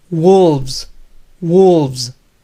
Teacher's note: En esta última palabra, la E es muda y por lo tanto el sonido V se une a la S final